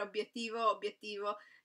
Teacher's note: In Sardegna non c'è molta differenza fra i due, si dice sempre obiettivo, obiettivo, come potete sentire la B, sound B, rimane molto forte, perché noi raddoppiamo le consonanti